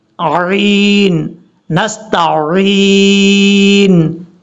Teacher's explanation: تا کے بعد عین ہے، جو کہ کئی لوگ غلطی کر جاتے ہیں، عین کو حمزہ پڑھ جاتے ہیں